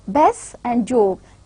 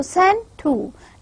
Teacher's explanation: the alveolar consonant, they are elided under the influence of the consonants surrounding them